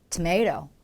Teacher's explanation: 토마토를 영어로 한다면 이렇게 a의 강세를 주면서 살짝 고개를 움직여 주면 좋은 거죠